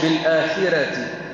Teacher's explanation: الذين لا يؤتون الزكاة وهم بالآخرة بالآخرة راء ما يش بالآخرة فخم الراء لأنها مفتوحة